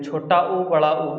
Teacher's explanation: इसको हम लोग ओष्ठ बोलते हैं क्योंकि ये ओठ से निकलता है